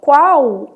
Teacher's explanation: alguns autores admitem a letra L com som de semivogal, vai ter som de U